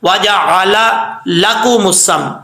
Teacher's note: دونوں لام ہے تو ان کو کلیئر کر کے پڑھنا ہے، الگ الگ کر کے واضح کر کے